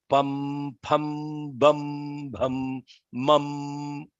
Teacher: These are called labials. Only the lips are used.